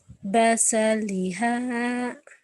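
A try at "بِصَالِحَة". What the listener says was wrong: Bukan basa, baso. So.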